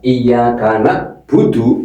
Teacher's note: Kalau dibaca iyaka budu berarti merubah huruf ain menjadi hamzah.